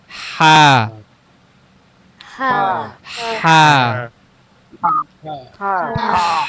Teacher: গলার মাঝখান থেকে উচ্চারণ হবে